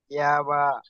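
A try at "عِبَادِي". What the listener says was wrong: আইন জারি ই হচ্ছে, তা এ বা হবে না, আইন জারি ই, বা আলিফ জবর বা, ইবা।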